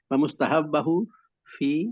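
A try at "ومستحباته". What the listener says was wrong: نہیں نہیں، یہ کیا ہے؟ یہ تو تا ہے، آپ اسے ہا پڑھ رہے ہیں.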